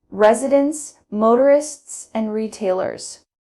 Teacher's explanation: rise, then fall for lists